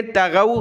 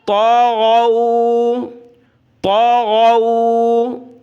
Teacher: بہت سارے باریک تا پڑھتے ہیں، یعنی چھوٹی تا جو نقطے والی ہوتی ہے، یہاں پر وہ پڑھ لیتے ہیں تغو، تو تغو نہیں بلکہ تا کو موٹا کریں، غین کو گلے سے نکالیں